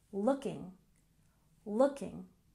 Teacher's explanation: we have emphasis on the first syllable